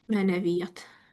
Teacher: bizdə həm uzanma hadisəsi baş verir, həm də siz tələffüz zamanı qoşa y-lardan biri düşürsünüz.